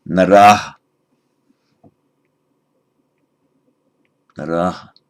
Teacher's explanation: the nominative plural is the same as the nominative singular, but with the lengthening of the a